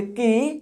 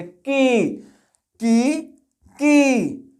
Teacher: छोटी ई की मात्रा जो है की को हम लोग सॉफ्टली पढ़ेंगे की और यह बड़ी ई की मात्रा है तो पढ़ेंगे थोड़ा सा जोड़ लगाकर की थोड़ा खींच करके पढ़ेंगे